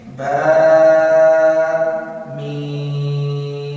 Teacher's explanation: با کے ساتھ الف ہے، میم کے ساتھ مد ہے، اس لیے میں میم کو لمبا کیا.